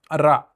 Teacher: र को लुंठित या प्रकंपित वर्ण कहा जाता है। र बोलते समय जीभ तालु से टकराकर कंपन या प्रकंपन करती है। इसलिए इसे लुंठित या प्रकंपित कहते हैं।